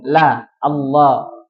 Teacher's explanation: Cuman suara lamnya itu ditebalkan L ya seperti itu.